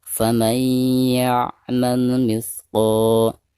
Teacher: Maka cara membaca nun sukun atau nun mati yang ada di sini itu harus langsung diidghamkan atau dimasukkan langsung ke huruf ya disertai dengan gunah. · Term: idgham bigunah